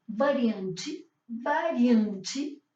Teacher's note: La variante que vamos a aprender nosotros, que en portugués es variante, variante, fíjense, nasal, la V bien pronunciado, labio dental, como vimos en el alfabeto, variante, y la E final que tiene un sonido como más parecido a una I que a una E